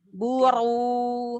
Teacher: Karena Buru, ro dhammah dibaca tebal. Ro dhammah, ro-nya dibaca tebal